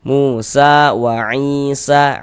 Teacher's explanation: Sehingganya sa dibaca panjang. Mad tabi'i panjangnya 2 harokat. Musa wa Isa, i dibaca panjang.